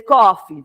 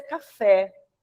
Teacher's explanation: Se fosse em inglês, coffee, seria paroxítona. Mas o português é café, é oxítona.